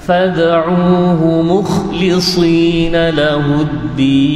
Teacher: Dal ini ialah tarful lisan wa usulus thanaya al-ulya. Hujung lidah, ya, hujung lidah yang bertemu dengan hujung lidah ni bertemu dengan penyirat gigi ataupun pemegang gigi itu. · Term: makhraj dal